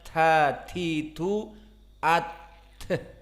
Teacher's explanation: Disukunkan ta, maka keluar masih udara. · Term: hams